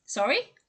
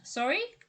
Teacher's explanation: Did you hear the rising intonation there?